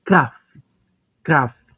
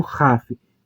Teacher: Com o Dagesh dentro tem um som de K. Sem o Dagesh dentro, vai ter um som de Ra, um KH.